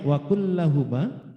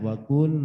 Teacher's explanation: Lam sukun bertemu lam. Jadi diidghamkan. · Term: Idgham mutlak